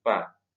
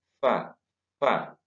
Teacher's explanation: Kalau pa berarti mulutnya kedua bibirnya bersentuhan, pa. Yang ini kedua bibirnya tidak boleh bersentuhan.